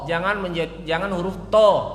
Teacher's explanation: Bunyinya memang to. Tetapi pangkal lidahnya nggak naik, mestinya pangkal lidahnya naik.